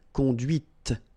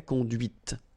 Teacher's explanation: And that's when you hear the difference between conduit, because remember, final T is not pronounced, conduit, here, and then the feminine, conduite.